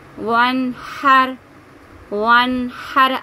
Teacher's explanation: الف کو نہیں پڑھیں گے، واو کو نون کے ساتھ ملا کے پڑھیں گے